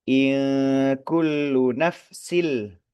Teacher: Nun sukun bertemu dengan huruf kaf hukumnya adalah ikhfa. Ngegantung samar mau ke huruf kaf tetapi ngegantung.